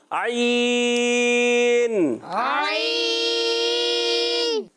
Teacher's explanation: حلق کے درمیان والے حصے سے عین اور ہا ادا ہوتے ہیں